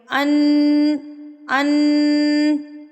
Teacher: नाक में एक हरकत के बराबर आवाज को रख के · जब हम पढ़ेंगे तो जुबान ऊपर ताल के साथ चिपकी रहेगी लेकिन जो जुबान को तालू से हमने हटाना नहीं है और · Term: गुन्ना